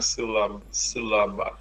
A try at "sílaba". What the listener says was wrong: Muito bem.